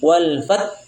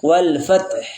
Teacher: ha tetap terbaca. Iya. Jangan sampai dihilangkan H-nya. Sebagian kita membacanya hilang H-nya.